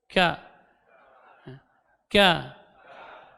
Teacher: huruf Kaf keluar dari pangkal lidah agak ke depan sedikit setelah huruf qaf